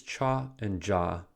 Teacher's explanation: For the affricates cha and ja, the center of the blade briefly touches the hard palate